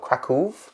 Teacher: Krakow, I think you extend the O, Krakow.